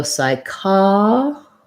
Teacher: The P is silent and the Y says I, the I diphthong. So psychology.